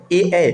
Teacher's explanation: ए की बात करेंगे तो अ और इ से मिलके बन रहा है मतलब ये कंठ तालब हो जाएगा